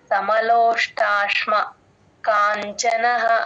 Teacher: యోగి యుక్త ఇత్యుచ్చతే యోగి యుక్త ఇత్యుచ్చతే యోగి సమలోష్టాష్మ కాంచనః సమలోష్ట ఆ ష కింద మామూలు ట ప్లేన్ ట ఒత్తు ఒత్తు ఠ కాదండి మహాప్రాణం ఎక్కడా లేదు